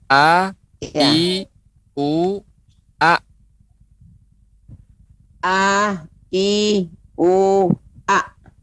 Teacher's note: Ya, insya Allah kita akan praktek makhraj al-halq, yaitu tenggorokan. Yang pertama, tenggorokan bagian bawah dahulu, yaitu huruf hamzah.